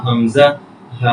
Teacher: একদম হলকের শুরু হইতে হামজা হা